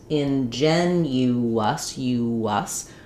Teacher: And here's another place where the reason why you might accidentally drop a syllable here, have this syllable rhythm error, is that we have not only this y, hidden y sound, ingenuous, but also a hidden w sound as we move from that rounded u to the unrounded us.